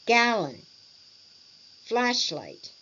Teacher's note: 2-syllable words with the stress on the first syllable.